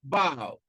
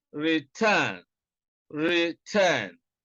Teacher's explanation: You can see that stress is on the second syllable in about, and also in return